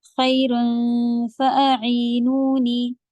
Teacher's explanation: خیر اخفا ہوگا فا کی طرف، خی کہیں گے خا نہیں